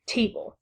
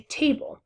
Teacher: the natural emphasis of the syllables is that te is stressed and then bull is unstressed, because you wouldn't say table.